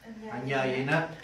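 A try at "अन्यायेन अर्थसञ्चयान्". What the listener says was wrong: Don't read it as anyaye na artha sanjayan. That means you don't want money and nyayam.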